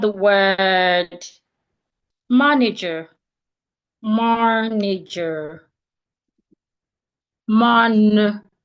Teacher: you add the suffix e r and it becomes a noun and it has three syllables we tend to stress the first syllable